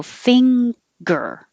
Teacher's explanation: the back of the tongue goes up for the fing noise and then you pull it down and make the release